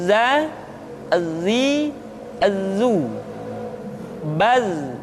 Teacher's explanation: ketika kita mengucapkan huruf dza suara kita mengalir akan tetapi nafas tidak boleh mengalir